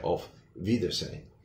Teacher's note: the W sometimes is pronounced a little closer to a V in English